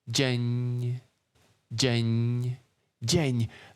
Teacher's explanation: The E in dzień doesn't sound as open as in, for example, ser